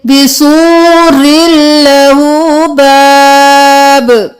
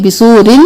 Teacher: रॉ को लाम के साथ मिलाएंगे, तनवीन नहीं करेंगे, बिसूरिन नहीं करेंगे, बिसूरिल लहू बाब फीहि रहमतुह।